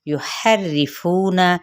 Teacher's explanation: یحرفون ہا باریک کرتے ہوئے را کے ساتھ ملائیں گے ، را کی کسرہ کو لمبا نہیں کریں گے، فو پہ